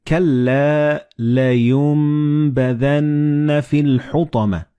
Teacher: And this meme appears in the middle of the word. So the noon and ba, when they follow one another in the same word, you don't pronounce noon or ba, but you pronounce meme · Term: assimilated